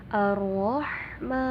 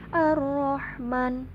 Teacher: panjang 3-5 harokat jadi bacanya enggak pendek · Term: hukum Mad Arid lissukun